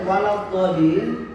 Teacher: Ini dha-nya ditahan baru ditekan atau dimasukkan ke huruf lam. Waladdallin, bukan dolin, bukan itu, tapi dolin, ada menekan sedikit. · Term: mad lazim mustaqal kilmi